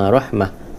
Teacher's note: Jadi bila kalau berhenti, matikan ta jadi huruf ha, jadi bunyilah rahmah.